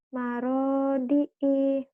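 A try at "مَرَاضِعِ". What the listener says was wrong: Pendek I-nya. Marodi'i. Marodi'i. Jangan digituin. Itu mah jadi panjang. Marodi'i.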